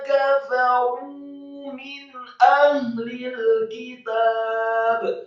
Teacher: Kata kafaru di sini kafnya fathah satu harokat, kemudian fa-nya dengan gigi seri atas kita ditempelkan dengan bibir bawah fathah satu harokat, kemudian huruf ra yang marfu atau dhamma dua harokat dan dibaca tafkhim tebal karena setelahnya ada wawu sukun.